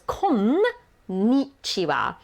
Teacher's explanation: It is actually two N's, so it's konnichiwa. So you have to really stress that konnichiwa.